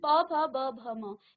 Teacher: इसका उच्चारण होता है आपके होठों से। इसलिए उसे ओष्ठ कहा जाता है। ओष्ठ से होता है इसलिए हम उसे ओष्ठ व्यंजन ओष्ठ प्रकार से कहते हैं।